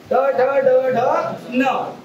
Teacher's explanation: तुमची जीभ पूर्णपणे वरती गेलेली आहे मुर्देला जाऊन भेडलेली आहे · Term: मूर्धन्य वर्ण